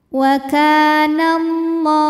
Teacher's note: Ka mad tabi'i dhahiri karena ada alif didahului baris fathah. Maka huruf kaf panjang 2 harokat.